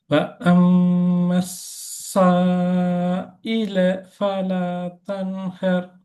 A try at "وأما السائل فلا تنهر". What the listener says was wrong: ஏன் இல ஃபலா நிப்பாட்டி எடுக்கிறீங்க? இல ஃபலா ஜாயின் ஆகி போட்டும். இல ஃபலா அப்படி அல்ல, அது சேரணும். லேல நிப்பாட்ட பாக்குறீங்க.